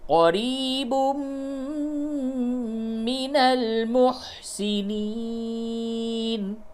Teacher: تنوین کے بعد میم ہے، ادغام مع الغنہ کیجئے